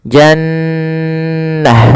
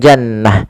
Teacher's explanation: Kemudian pada lafal jannah, maka di sini nun tasdidnya kita namakan dengan bacaan gunnah. Cara membacanya adalah suara nunnya ditahan dulu, ya, jannah, tidak langsung jannah.